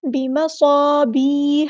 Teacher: ہا کو مستحلق یعنی مڈل تھروٹ سے ادا کرنا ہے